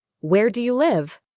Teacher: My voice goes down on live. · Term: falling intonation